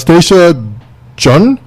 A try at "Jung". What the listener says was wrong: Young. Young. The last name is spelled Jung. However, it's a soft J. It's a European pronunciation, so it's Young.